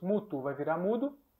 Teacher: a uma surda vai se tornar sua correspondência sonora